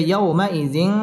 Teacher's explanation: ইয়াও জবরের বাম পাশে জজমওয়ালা ওয়াও লিনের হরফ তাড়াতাড়ি পড়তে হবে ওয়াও ঠোঁট গোল করে উচ্চারণ করতে হবে